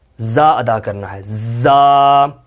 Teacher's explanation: زا کو سختی کے ساتھ آگے والے دانتوں کو ملا کر جوڑ کر زا ادا کرنا ہے